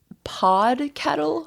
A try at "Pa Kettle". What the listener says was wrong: just Pa, P-A. Kettle. Pa Kettle. Pa Kettle.